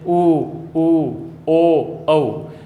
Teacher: अब देखिए ओ, औ, इनका अपन उच्चारण करते हैं तो होठ गोलाकार आकृति बनाते हैं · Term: वृत्ताकार स्वर